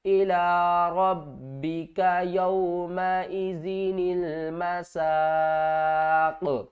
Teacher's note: قاف کو ساکن کر دیں گے۔ جب ساکن ہوگے تو قاف کے اوپر قلقلہ بھی ہوگا